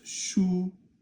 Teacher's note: Now that's shu, which means a book. It's first tone.